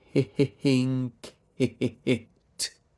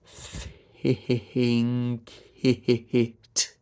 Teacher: So think and it are the same vowel shape, aren't they? And all that's between them, between the I on ink, think, and the I on it, are those two consonants, k.